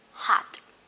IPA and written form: hɒt (hot)